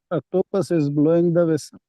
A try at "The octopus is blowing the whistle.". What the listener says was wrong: The octopus is blowing the whistle, not vessel. Vessel का मतलब तो कोई बर्तन होता है. Whistle.